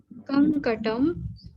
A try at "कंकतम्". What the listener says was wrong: कंकतम, ता है ना?